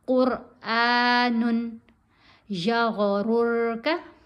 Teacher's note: कौफ को भी मोटा पढ़ेंगे, रा को भी मोटा पढ़ेंगे, अलिफ को खींच के पढ़ेंगे।